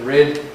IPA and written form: rid (rid)